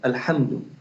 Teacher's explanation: الحمد، ان سے ہا نہیں نکلتا، یہ حلق سے نکلے گا یہ ہا، اور یہ حلوے والا ہا ہے